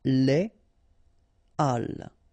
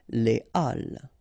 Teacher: Okay, so, but in that case still, even if you've got this H, okay, it belongs to this aspiré group of words, so containing this H, okay, and it means that you won't have the possibility to make the liaison between your article and your word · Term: H aspiré